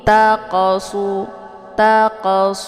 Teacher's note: kalimat jadi J qf sukun ini dinamakan dengan qalqalaf Sugra jadi cara bacanya huruf qaf ini dipantulkan dengan pantulan ringan